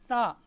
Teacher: زبان کی نوک کو ثنایا علیہ کے کناروں کے ساتھ لگانے سے حرف سا ادا ہوتی ہے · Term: سا کا مخرج